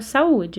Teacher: eu tenho aqui duas vogais que estão uma ao lado da outra porém elas estão separadas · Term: hiato